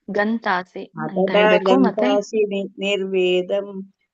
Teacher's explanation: ಅದು ಗತಾಸಿ ಅಲ್ಲ ಮಾತಾಜಿ ಅಲ್ಲಿ ಗಂತಸಿ ಅನುನಾಸಿಕ ಇದೆ